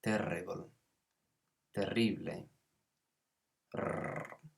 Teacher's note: We hear that rolling R, so R's in English are very different to in Spanish.